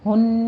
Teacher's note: ہن میں غنہ واجبہ کریں گے، 2 کاؤنٹ کرنا ہے